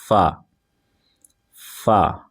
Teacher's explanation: اوپر والے دانتوں کے کنارے اور نچلے ہونٹ کے تر حصہ سے ادا ہوتا ہے